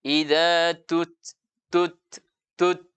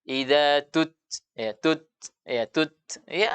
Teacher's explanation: karena tekanan kuat kemudian begitu lepas maka ada aliran nafas yang keluar karena terbuka langsung pita suara kita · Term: sifat hams